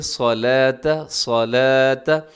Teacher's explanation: اس میں صاد موٹا رکھیے گا، باقی سب اس میں باریک پڑے جائیں گے۔ اسے آپ صلاۃ نہیں پڑھنا بلکہ صلاۃ، صلاۃ۔